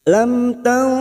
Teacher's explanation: ikhfa hakiki, ini juga yang disebut dengan ikhfa aqrab, kita samarkan bunyi nun sukun 3 harokat